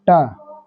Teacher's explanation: अगर जीभ 90 डिग्री ऐसे खड़ा होगा तो तुम ही बताओ यहाँ से सबसे 90 डिग्री पर खड़ा क्या है, ये है मूर्धा, इसलिए मसूढ़ा में चढ़ेगा ना। ट वर्ग का सभी लेटर का उच्चारण कौन सा, मूर्धा से ऐसे करके टच हो जाता ऊपर